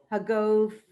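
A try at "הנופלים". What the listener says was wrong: No, that's a nun.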